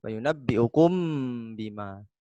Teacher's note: Mim mati ketemu dengan ba. Hukum bacaan adalah ikhfa syafawi.